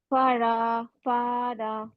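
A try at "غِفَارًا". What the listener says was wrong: না, রা না, র।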